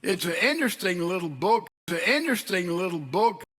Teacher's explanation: several dialects can have the N-less indefinite article before a vowel.